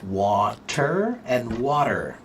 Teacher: when it's spoken quickly, there's no time to say the entire sound, so instead we cut the front part of the T off and leave the back part of the T, and that is what they call the flap T.